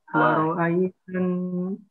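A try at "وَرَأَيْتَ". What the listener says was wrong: Jangan woro. Waro. Jelaskan.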